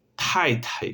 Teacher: es un sonido como la T, pero yo exhalo